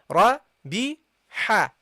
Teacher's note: ha from the middle of the throat